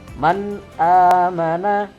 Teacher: Disebut huruf halqi karena makhraj atau tempat keluar huruf-huruf tersebut dari tenggorokan atau halqi. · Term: idhar halqi